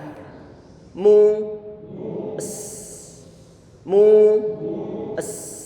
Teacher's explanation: Ini sin, dia perlu harus berdesis, ada suara desisan di sana. Dan suara sin ini yang dia punya sifat yang disebut sebagai shafir.